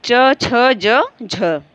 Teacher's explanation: तालव्य जो तालु के द्वारा बोला जाता है, जिसका उच्चारण स्थान तालु, तालु होती है, जीभ झटके से ऊपर जाकर के छूती है तालु को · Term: तालव्य व्यंजन